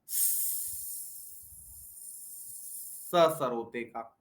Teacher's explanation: हमारी दांत पे के पास ले जाओ जीभ, मसूड़ों पे, और हल्का सा उसके अंदर गैप दे दो, हवा को उसके ऊपर से जाने दो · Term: दंत वर्ण